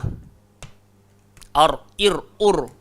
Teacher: Hujung lidah langgar le langit. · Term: Ra